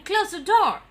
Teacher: Or you can tell, instead of telling close the door, if you're telling the falling tone, it will become a command.